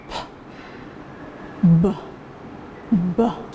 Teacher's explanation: When you place your hand under your throat and there is a vibration, B, B. In pronouncing B sound, there is a vibration in the vocal cord, so it is voiced.